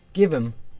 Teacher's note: In casual speech, the H at the beginning of function words often disappears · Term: disappearing H sound